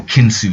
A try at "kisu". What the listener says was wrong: Kisu. Yeah, no, it's not an N.